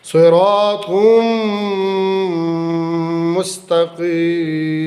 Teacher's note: تا کے بعد جو قاف ہے وہ مستقل حروف مستعلیہ میں سے، یہ بھی ہر وقت موٹا پڑھا جائے گا